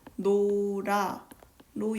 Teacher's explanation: 어미가 모음으로 시작하므로 리을이 탈락하지 않고 노라로 연음됩니다